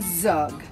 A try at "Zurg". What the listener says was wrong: Sorry to interrupt your speech, but it's pronounced Zurg. There's an R in there.